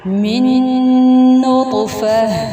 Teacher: یہ ایسے لیٹر ہیں جس کے اندر ہم یہ دیکھ رہے ہیں کہ ہم غنہ کے ساتھ 2 کاؤنٹ سٹے کرتے ہوئے ہم ان 2 لیٹرز کو آپس میں ملاتے ہیں